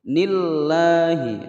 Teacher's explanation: Du dibaca panjang sebab ada wawu sukun sebelumnya dhammah atau ada dhammah yang diiringi wawu sukun, maka dibaca panjang 2 ketukan, hukum bacaan mad tabi'i. Nillahi, ninya dibaca pendek langsung masuk ke lam jalalah, dibaca tebal dan dibaca panjang 2 ketukan. Nillahi, hinya pendek.